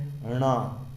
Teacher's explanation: टवर्ग का 5वां अक्षर, जिसमें जीभ थोड़ी सी अंदर मुड़ती है